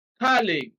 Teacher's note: colleague stress is on the first syllable